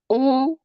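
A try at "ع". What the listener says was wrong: Ini sepertinya masih suara hidung. disebutkan hurufnya sambil ditutup hidungnya, ditutup seperti ini hidungnya. masih tercampur dengan hidung. Sedangkan ain itu dari tenggorokan bagian tengah keluarnya.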